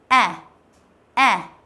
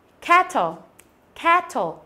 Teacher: Nó là a và e kết hợp với nhau. Bạn đọc a nhưng mà để mồm như chữ e, hoặc là bạn đọc e nhưng để mồm như chữ a, một trong hai cách đều được. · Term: âm e bẹt